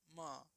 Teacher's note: म आपका होठ और नाक दोनों बोलेगा, म देखिए तो होठ भी सट रहा है और नाक भी थोड़ा वहां से आएगा आवाज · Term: अनुनासिक